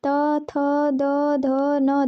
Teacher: त, थ, द, ध, न दांतों से निकलता है